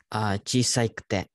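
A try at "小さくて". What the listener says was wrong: Chisakute. gotta make sure there's no E there. Gotta kill that guy.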